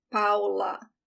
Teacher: it's a very open a